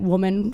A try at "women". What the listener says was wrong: You said woman.